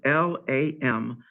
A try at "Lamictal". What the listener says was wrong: It's Lamictal, C, not S.